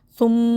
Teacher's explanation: میم مشدد کو غنّے کے ساتھ پڑھیں گے اور سا میں زبان دانتوں سے باہر آئے گی، سو ہونٹ